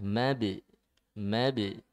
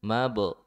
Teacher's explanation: hati-hati ba-nya dipantul dan ditipiskan ya